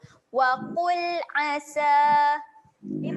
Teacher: Okey, huruf ain, jaga makhraj huruf ain. Tekan di tengah kerongkong.